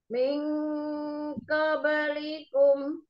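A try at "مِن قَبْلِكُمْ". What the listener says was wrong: Enggak ke, tapi kok ke, tebal ya. Miung qablikum.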